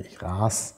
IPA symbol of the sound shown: s